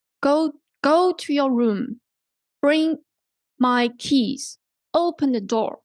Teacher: so the emphasis usually put on the first word right because it's command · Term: falling intonation